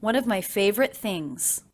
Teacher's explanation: So it's not favorite, but simply favorite, favorite things. And I notice that I am making that a stop T. I'm not releasing it. I'm going straight into the TH.